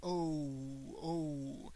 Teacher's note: when you say O, in English you add like this little U sound at the end.